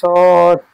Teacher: সদের মাখরাজ হচ্ছে জিভের আগা এবং সামনের উপরের নিচের দুই দাঁতের আগার সাথে লাগিয়ে উচ্চারিত হয় সদ। জিভের আগা, জিভের আগা এবং সামনের উপরের নিচের দুই দাঁতের আগা, সামনের উপরের নিচের দুই দাঁতের আগার সাথে লাগিয়ে উচ্চারিত হয় সদ।